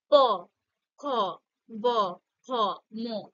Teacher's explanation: ব কি কি হচ্ছে ব ঠোঁট দুটো স্পর্শ করছে প বলো যখন আমরা বলছি ঠোঁট দুটো একে অপরের সঙ্গে স্পর্শ করছে